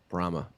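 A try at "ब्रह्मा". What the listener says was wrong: It's got a long A on the end.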